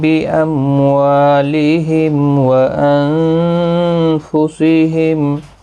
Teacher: بِأَمْوَالِهِمْ میم ساکن کے بعد واو آئی، ظاہر شفوی ہوگا، یہاں پر واو آیا ہے میم ساکن کے بعد، یہاں پر بھی ظاہر شفوی ہوگا۔